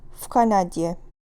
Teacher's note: k is voiceless, v is voiced. So what will happen here? V will become f.